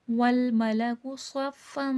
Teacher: صفن میں سواد موٹا کر کے پڑھا جائے گا، فن میں غنہ ہوگا کیونکہ تنوین ہے۔